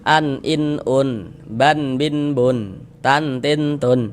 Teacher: setiap kita mengucapkan tanwin di ujungnya itu ada huruf nun sukunnya tuh, yang tampak, yang kelihatan kalau kita ucapkan